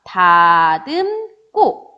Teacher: 고 예사 소리가 꼬로 된소리로 발음 났고요.